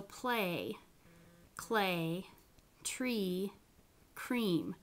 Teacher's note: so play clay tree cream all of those they become devoiced instead of actually turning your voice on your voice doesn't come on until you say the vowel · sounds a little bit more like a sonorant than an obstrunt the liquids can be devoiced after voiceless stops so play clay tree cream all of those they become devoiced